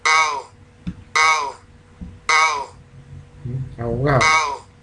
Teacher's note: la B, la D y la G, o sea, las supuestas fricativas sonoras, eh, sufren de un proceso de debilitamiento · Y aquí en abogado, AO, fíjense en AO, hay una elisión, la D